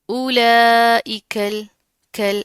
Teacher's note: لام کے اوپر تشدید ہے، مضبوطی سے جما کر پڑھیں گے اور اس لام کو کاف کے ساتھ ملا دیں گے، ٹھیک ہے۔ اس کاف اور لام کو دونوں کو ملا کر پڑھیں گے۔